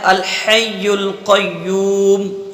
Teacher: تو اب یہاں پر ہم اس طریقے سے پڑھ سکتے ہیں الحی القیوم، ٹھیک ہے، اور تھوڑا کم بھی کھینچ سکتے ہیں الحی القیوم، اور بالکل قصر سے ہی پڑھ سکتے ہیں الحی القیوم، بس ایک الف کے برابر ادا کر دیں، یہ قصر ہو جائے گا